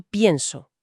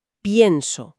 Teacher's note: El chasis base es Pens, pero al conjugarlo en la primera persona, el acento de la voz cae directamente sobre esa e con tantísima fuerza que la quiebra y la expande. No decimos pienso con e, decimos yo pienso haciendo esa pausa, pienso. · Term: diptongación